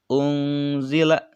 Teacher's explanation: maka dibacanya samar dan dengung, dan ketika menyebutkannya itu terdengar suara an dan suara ang. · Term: ikhfa